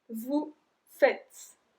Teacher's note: So here we don't pronounce the E or the S.